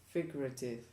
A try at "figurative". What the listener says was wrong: Figurative with a V. Because you're saying an F. Spanish thing.